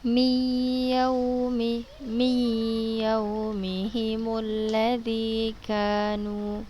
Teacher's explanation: Huruf nunnya dibaca dengan berdengung, dimasukkan ya, dimasukkan ke huruf ya. Huruf nunnya dimasukkan ke huruf ya dengan berdengung dan temponya 2 harokat.